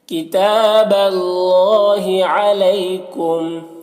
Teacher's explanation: کتاب میں کھڑا زبر ہے، تا میں ایک الف کے برابر کھینچ کر پڑھیں گے، اور اللہ کے لام کو پر پڑھیں گے، اس سے پہلے زبر ہے۔ علیکم میں یا، یہ یا لین ہے، اسے بھی جلد پڑھیں گے نرم آواز کے ساتھ۔